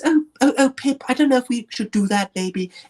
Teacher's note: she speaks differently with a little bit more breathy